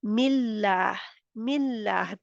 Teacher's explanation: जबड़े बिल्कुल स्माइल की तरह मुस्कुराते हुए जैसे होता है इस तरह पढ़ते हैं फिर हम उसको मोटा नहीं करते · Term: स्माइली लाम